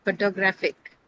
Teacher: Photographic here it is not stressed because in photographic the stress moves to the third syllable graph